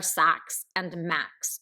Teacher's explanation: So those are both assonant and consonant rhymes, meaning that the vowels rhyme and the consonants rhyme. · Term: perfect rhyme